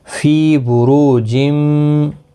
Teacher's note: رو واو مدہ ہے، را پر بھی پڑھا جائے گا، پیش کی وجہ سے ایک الف کی مقدار کے برابر کھینچ کر بھی پڑھا جائے